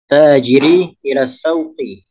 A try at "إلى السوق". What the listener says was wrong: Ila suqi, bukan sauqi, namun suqi.